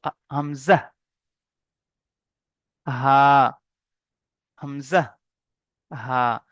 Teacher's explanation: হামজা এবং হা, হালাকের বা কণ্ঠনালীর শুরু থেকে, মানে এই যে কণ্ঠনালী আছে শুরুর ভাগটি, মানে জিহ্বা শেষ হচ্ছে, জবান শেষ হচ্ছে, আর এই গলার শুরুর ভাগ থেকে, গলার শুরুর ভাগ থেকে উচ্চারিত হয় কে?